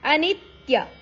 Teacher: ನಿ ಅಕ್ಷರದ ಮೇಲೆ ಆಘಾತ ಇದೆ